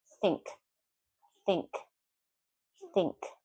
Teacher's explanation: If I don't put my tongue between my teeth, I'm saying tink.